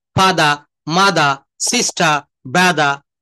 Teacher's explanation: কিন্তু শব্দের শেষে আর থাকলে সেই আর এর উচ্চারণ কখনোই করা যাবে না।